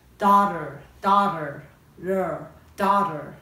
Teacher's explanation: 発音ですけど、この真ん中の▁gh▁読まないので声出ないんですね。▁daughter。▁そして この▁t▁がですね、実際母音と母音に挟まれるので、▁l▁のような、▁d▁のような、ラ行のような、ダ行のような声なんですよね。